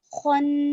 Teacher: خو موٹا پڑھیں گے، حروف مستعلیہ میں سے